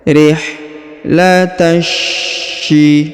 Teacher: maka huruf ta langsung dimasukkan, disambung ke huruf sya ya, masuk ke sini, ditahan dan ditekan ya, disambung ke sini huruf sya, ditahan dan ditekan.